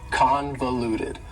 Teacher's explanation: convoluted also has four syllables and the stress is on the first syllable convoluted that second syllable